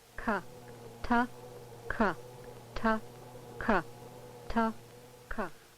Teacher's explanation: For example, the stop plosive sounds, T and K, are differentiated primarily by the fact that the tract obstruction on T is between the tongue and alveolar ridge, while for K, it is between the back of the tongue and the undersurface of the hard or soft palate